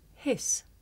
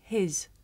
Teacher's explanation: For speakers of some languages, it may be difficult to tell the difference between the voiceless sound s and its voiced partner z